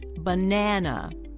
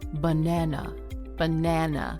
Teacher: The natural stress in that word, banana. Notice that the middle syllable, na, is longer than the other two syllables. It's also slightly louder, and the vowel is nice and clear. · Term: stressing that middle syllable